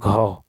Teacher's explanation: ग है जो है सघोष अल्प प्राण, और घ है सघोष महाप्राण